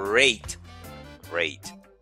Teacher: C'est comme si ça fait sembler qu'on dit W devant.